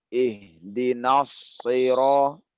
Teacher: Shad ini mesti dijaga ketebalannya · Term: ketebalan huruf shad